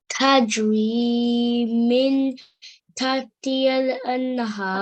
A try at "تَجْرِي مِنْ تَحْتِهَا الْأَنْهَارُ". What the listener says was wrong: Min should be done. But this one should be done with ikhfa because we can see that that is the next preceding letter, so we need to do 2-second nasal sound like this. تجري من تحتها الأنهار.